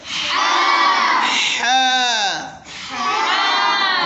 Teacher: یہ حلق کے آخری حصے سے جو سینے کی طرف ہے، کہاں ہے؟ حلق کا آخری حصہ جو سینے کی طرف ہے اس سے ہوتا ہے ادا ہا